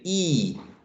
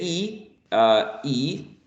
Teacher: they are not shaped as a circle as we say e when you say e that's not a circle so we are going to call that the lips are unrounded and when you say for example ooh that's going to be